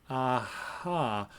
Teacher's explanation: the H is basically just a voiceless or sometimes called whispered vowel whispered because you have that friction being generated at glottis like · for the h all I'm doing is changing what's happening in the glottis and everything else is positioned as for a vowel and so it's going to resonate as for a vowel and